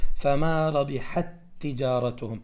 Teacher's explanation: التاء هنا ساكنة والتاء تجارتهم فالتاء والتاء تصبح تاء واحدة وتقول فما ربحت تجارتهم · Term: المتماثلين